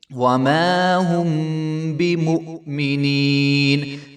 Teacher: میم کے آگے الف ہے تو اس کو ایک الف کے برابر لمبا کریں گے. وما هم بمؤمنین، بمؤمنین، واو کے اوپر جو ہے حمزہ ہے اور حمزہ کے اوپر جزم ہے اور ہم نے پڑھا ہے کہ جب حمزہ ساکن ہوگی تو اس کے اوپر جھٹکا آئے گا.